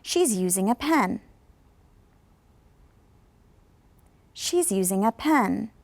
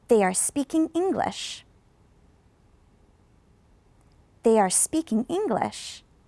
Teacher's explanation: at the end of sentences notice that it goes up a little bit and then it goes down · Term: Rising falling